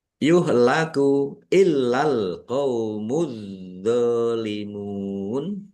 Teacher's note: lamnya dibaca dobel ada tasdidnya ditekan dan ditahan biar tampak dobelnya